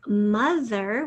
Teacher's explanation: we again have that schwa sound for the o